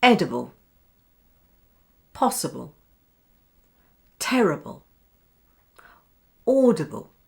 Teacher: Instead of saying ibble, we say ubble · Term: schwa sound